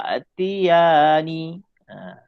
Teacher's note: Ai itu masuk kepada ya, jadi kita dengung bunyi ya. Ai tak boleh an, tapi kena masuk ke ya, jadi dengung dia dekat huruf ya. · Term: idgham bihunah